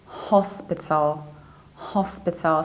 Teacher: in the British accent, you stress the very first syllable, not P, and then you reduce the ending.